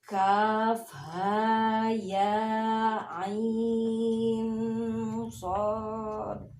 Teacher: Jadi nun ketemu sod dibaca ditahan dulu 2 harokat.